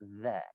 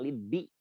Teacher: Coba kalau kita mempelajari ilmu al-aswat, lidzikri itu ada huruf zal yang keluar dari ujung lidah yang ditempelkan ke ujung gigi seri